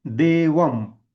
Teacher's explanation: अक्षर किंवा वेगळा शब्द नसेल त्यावेळेला आपण त्याचा उच्चार कसा करतो देवम म्हणजे शेवटी अर्धा म येतो